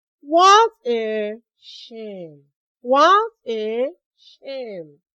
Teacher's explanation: You notice that my voice went down at the end of the exclamation. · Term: falling tone